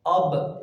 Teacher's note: با جو ہے اس کا مخرج ہے ہمارے ہونٹوں کی اندرونی جگہ جو تری والی ہے، ہونٹوں کو ملائیں تو تری والی جگہ جو ہماری اندر بند ہو رہی ہے اس سے با کا حرف جو ہے وہ ادا ہوتا ہے۔